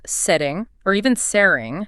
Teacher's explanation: they use a flap T, the tongue just taps quickly. So setting becomes sitting or even searing.